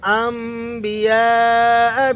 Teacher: اقلاب کا مطلب ہے چینجنگ، تو یہاں پر آپ نے نون کی آواز کو میم کی آواز سے چینج کر کے پڑھنا ہے